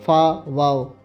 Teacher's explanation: निचला होठ जमा ओपरी दांत बराबर लब दंती